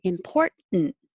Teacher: i'm going to put my tongue in the t position for import but hold it there